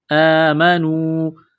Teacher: آمنو مد کی وجہ سے اس کو تھوڑا کھینچنا ہے ، اشد، دال کو دبانا ہے تشدید کی وجہ سے، با